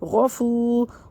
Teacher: آئے گی، اور واو مدہ، واو ساکن سے پہلے پیش ہے، واو مدہ ہے، اس کو ایک الف برابر کھینچ کے پڑھ دیں گے